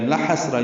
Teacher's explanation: لام کو لمبا نہیں کرنا، ہا کو سین سے ملانا ہے، سین ساکن پہ ہمس ہے، سانس جاری رہتی ہے اس کے پڑھتے ہوئے، اور یہ نرمی سے پڑھا جاتا ہے، باریک پڑھا جاتا ہے۔